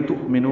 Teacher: تؤمنو میں حمزہ ساکن جھٹکے سے ادا ہوگا، نو واو مدہ ہے